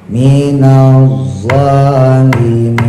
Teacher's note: Nah zo-nya jangan lupa dimonyongin.